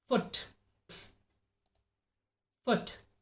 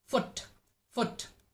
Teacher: the body of the tongue is raised high and is as close as to the roof of the mouth the jaw drops very little and the mouth is barely open